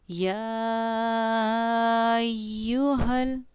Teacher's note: اس کو 4 الف مقدار، 4 الف کے برابر کھینچ کر ہم پڑھتے ہیں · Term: مد واجب